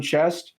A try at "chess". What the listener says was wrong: On chest? Because you said chest with a T.